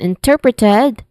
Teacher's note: interpreted, where ter, the second syllable, is stressed